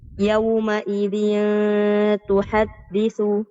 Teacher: التنوين بالكسر مخفى عند التاء المضمومة بغنى حركتين